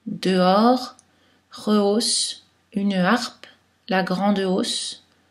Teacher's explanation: On prononce aussi les schwa devant un H aspiré.